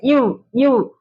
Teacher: மேல்வாய் பல்லு கீழ் உதட்டை பொருந்துவதால் பிறக்கின்றது